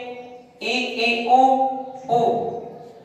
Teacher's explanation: वे स्वर जिनका उच्चारण करते समय मुख का कुछ ही भाग खुलता हो